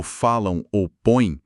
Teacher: o som que a gente produz no final não é de uma consoante, é de um ditongo nasal. Falam soa como se terminasse em e põe soa como oin.